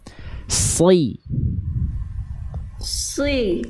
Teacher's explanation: Oke, huruf sodnya jangan monyong. SI biasa bunda, si, tapi lidah bunda didorong ke dalam, pangkal lidah diangkat, isti'la.